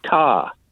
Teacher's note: most varieties of British English lost the R in words like car